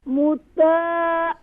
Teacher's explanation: Ain sound is pronouncing from middle of throat.